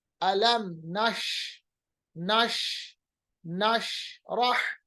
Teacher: जब भी हम शीन को अदा करेंगे इसकी आवाज को हम फैलाएंगे, मखरज में इसकी आवाज फैल जाती है। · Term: तफशी